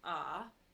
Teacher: the third tone is your scoop tone and it's just a little curve so it's like ah so it goes down and then back